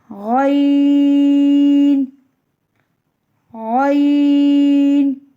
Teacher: حلق کے شروع سے جو منہ کی طرف والا حصہ ہے وہاں سے غین ادا ہوتا ہے. غین کو بھی ہم کھینچ کے پڑھتے ہیں.